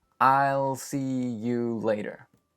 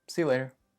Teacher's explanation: notice how those three words almost become one word